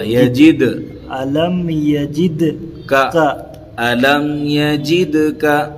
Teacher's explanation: جیم سے دال کو ملائیں گے، قلقلہ ہوگا